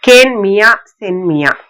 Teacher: மா இகரம் ஏறிதான் மியா ஆகியிருக்கு. இந்த இகரம் ஒரு மாத்திரையா ஒலிக்காம அரை மாத்திரை அளவினதாதான் ஒலிக்கும். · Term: குற்றியலிகரம்